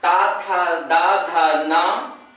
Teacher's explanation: ता, था, दा, धा, ना, ये दंत है। इसमें वायु दंत का स्पर्श करती है।